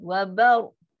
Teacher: Ingat ba, dua-dua ni istighfar rendah. Ra ni ra yang tafkim, tebal.